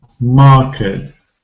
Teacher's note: I know that AR spelling usually makes the sound R, long vowel sound. It's long, it's not a diphthong, it doesn't change, but it's a long vowel sound.